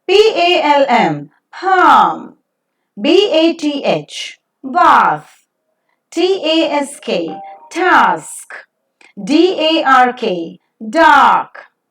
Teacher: is back, unrounded vowel, just above the open position. It also can be said that it is back, open, unrounded, long vowel. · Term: ah sound